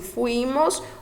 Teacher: o I ele se torna mais forte um pouco do que o U